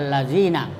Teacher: Jadi lam pertama tidak dibaca, yang dibaca lam kedua allazina, ya, karena 2 lam di situ, ya, hanya pakai tasdid. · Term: lam syamsiyah